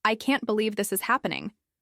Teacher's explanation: The stress usually falls on can't, believe, and happening. While the words this and is are said more quickly and lightly. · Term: rhythm